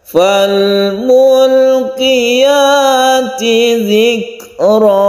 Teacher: Nah, kita tinggikan yang fal mulqiyat.